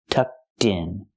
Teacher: We hear the pronunciation of that ED pronounced like a T. Tucked in. Link it to the next word.